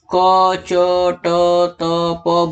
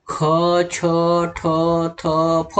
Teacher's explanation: महाप्राण में व्यंजन के उच्चारण के समय मुंह से अधिक हवा निकलती है। · हवा ज्यादा मात्रा में निकल रही है, इसलिए क्योंकि ये महाप्राण वर्ण हैं। अघोष कहने का मतलब है इसको जब हम बोलेंगे तो गले के अंदर घनघनाहट नहीं होगी।